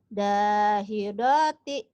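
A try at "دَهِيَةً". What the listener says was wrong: Dahidoti. Nggak ada yang panjang ujungnya. Mhm.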